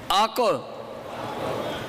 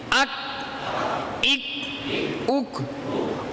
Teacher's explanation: अगर काफ की आवाज़ के ख़त्म करने से पहले आप ज़ुबान को मखरज से पीछे कर लेंगे तो कलकला हो जाएगा, आको। लेकिन अगर ज़ुबान को उसी जगह रखेंगे कलकला नहीं होगा।